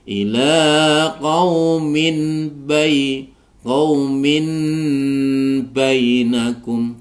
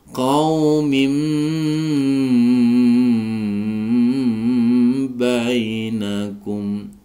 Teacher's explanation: nun sukunnya itu berubah menjadi mim sukun, sehingga ila qaumim bainakum ya, tidak boleh ila qaumin bainakum, bukan begitu, tapi qaumim bainakum. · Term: iqlab